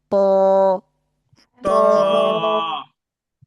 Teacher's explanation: স্বাভাবিক তায়ের চেয়ে একটু মোটা হবে